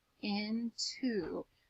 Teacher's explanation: The O is making the ooh sound instead of saying its long sound or its short sound. I'm saying the ooh sound.